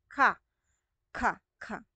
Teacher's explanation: Yung K naman, so pangalangala. Sa ngalangala po natin, sa velar part po natin.